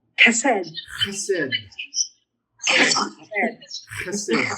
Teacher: You got to get a little bit of that guttural going. The back of the throat sounds good.